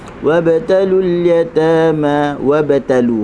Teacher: huruf ba berada di tengah kalimah sukun, maka kita kena baca dengan qalqalah